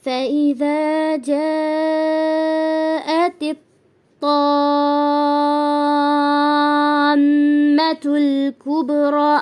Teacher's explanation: مد لازم، اگر حروف مدہ کے بعد مشدد والا حرف آ جائے، حروف مدہ الف وا یا، ٹھیک ہے، اس کے بعد مشدد والا حرف آ جائے تو وہاں پر جو مد ہوگی وہ مد لازم کہلائے گا، اور اس کی مقدار لمبی یعنی طویل ہوگی. 6 سیکنڈ کی حرکت کی ہوگی، 6 حرکات کی ہوگی، 6 سیکنڈ بول سکتے ہیں آپ.